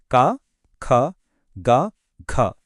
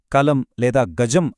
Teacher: ఇవి పలికినప్పుడు కలం లేదా గజం అని అన్నప్పుడు ఆ వైబ్రేషన్ గొంతు లోపల ఎలా వస్తుందో మనం స్వయంగా ఫీలవచ్చు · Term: కంఠ్యాలు